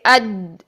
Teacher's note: آواز مخرج میں بلندی اور قوت کے ساتھ ایسے ٹھہرتی ہے کہ سانس بند ہو جاتا ہے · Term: جہر